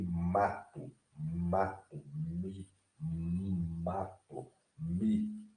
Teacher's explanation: Observe que ela é bilabial. Você tem que unir os dois lábios, né, o superior e o inferior, para pronunciar essa letra.